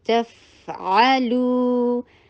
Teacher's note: تا کو سختی کے ساتھ ادا کرنا ہے اور فتحہ شارٹ کرنی ہے